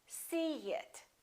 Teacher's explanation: in this case we put a little y a little ye sound